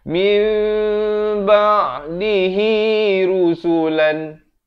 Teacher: Bunyi nun kepada bunyi mim. Jadi daripada min jadi mim. Tapi jangan lupa dipanjangkan 2 harakat. Mim itu sekadar bersentuhan saja bibir atas dengan bawah. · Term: iqlab